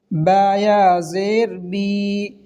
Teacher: یا مدہ کو 1 الف کے برابر کھینچ کر پڑھیں گے